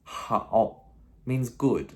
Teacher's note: 好 with that third tone, that V, you know, fall and rise tone, or dipping and rising tone,